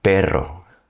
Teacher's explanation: taking my tongue, putting it on the roof of my mouth, near the front of my mouth, and just letting it bounce a little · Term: trill